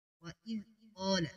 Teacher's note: دال کو نرمی کے ساتھ قاف موٹا ہوگا